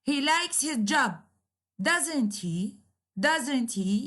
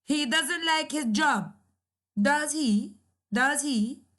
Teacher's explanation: the intonation is falling so instead of going up it is going down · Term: falling intonation